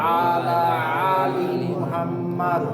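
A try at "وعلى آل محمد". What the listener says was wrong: ওয়া আলা, প্রথমটা আইন পরেরটা হামজা। ওয়া আলা আলি মুহাম্মাদ। আলি দুইটাই আইন হয়ে যাচ্ছে। ওয়া আলা আলি হামজা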